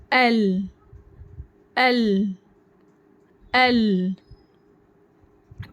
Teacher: जबान की नोक ऊपर मस से लग रही है · زبان کی نوک اوپر کے دانتوں کے مسوڑوں کو لگانے سے لام حروف ادا ہوتا ہے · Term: लाम